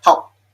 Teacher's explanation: It tends to be implosive with the air going the opposite way. Also with lip closure, so that's that rounding thing.